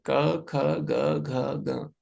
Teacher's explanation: क वर्ग में जो ध्वनि आती है उस कंठ से आती है।